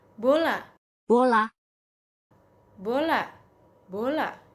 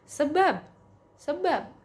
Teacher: seperti bunyi P namun ada perbedaan utamanya yaitu getaran pita suara saat bibir menutup udara dilepaskan pita suara kita bergetar sehingga menghasilkan bunyi bersuara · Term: bunyi hambat bersuara